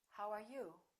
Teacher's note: wh questions have falling intonation